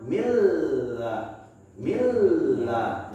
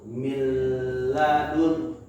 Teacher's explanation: Kita lebur bunyi n-nya ke arah ke bunyi la, ke huruf la, yaitu milladun. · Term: Idgham